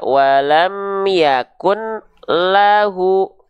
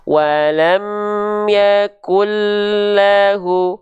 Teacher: Dimasukkan ke huruf lamnya, bunyiannya tanpa didengungkan, tanpa ditahan. Karena bila gunnah, la gunnah, ghairi gunnah, tanpa dengung, tanpa gunnah. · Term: idgham bila gunnah